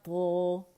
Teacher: اوپر جو زبان کی جڑ اوپر تالو کی طرف اٹھتی ہے، ہمارے نرم تالو کی طرف، وہاں راستہ بند ہو جاتا ہے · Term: بہت موٹا لیٹر